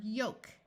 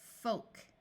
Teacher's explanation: in trolling if the root word ends in o l k the O will also be long but also the L will be silent